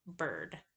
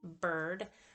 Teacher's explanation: So if it's one syllable, bird, or it is the stressed syllable, it will be that right hook reversed epsilon, and that's produced mid-range in the mouth, in the middle of the tongue, and the tongue is kind of central. It is not far forward.